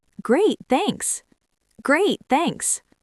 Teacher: voice goes up a little bit at the end of thanks. It sounds light and friendly.